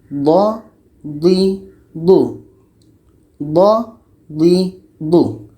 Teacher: Da ini letaknya pada salah satu tepi lidah atau keduanya bertemu dengan gigi geraham atas.